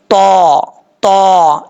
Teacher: नोक ऊपर वाले दांतों की जड़ों से लगे और जुबान ऊपर की तरफ उठे तो ता पढ़ा जाता है